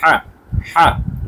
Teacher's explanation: তো আমাদের বলতে হবে এভাবে হা গলার ভেতর থেকে চাপ দিয়ে